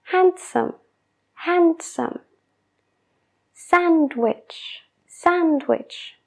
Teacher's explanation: tengo que parar después de la d antes de seguir con el resto de la palabra handsome handsome sandwich sandwich pero si la omito todo fluye más